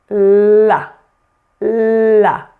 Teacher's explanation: If you remember, the tip of the tongue touches the alveolar ridge, which is the bony part of the roof of your mouth just behind your upper front teeth, right here.